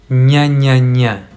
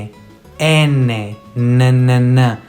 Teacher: When I say ñ, the tip of my tongue touches my bottom teeth